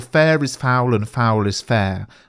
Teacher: the form used by the witches is trochaic meter, with stressed syllables followed by unstressed syllables